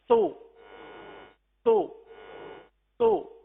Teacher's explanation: لگنے کے بعد فوراً ہی ہونٹ گول ہو رہے ہیں اور پھر اپنی اصلی حالت میں آ رہے ہیں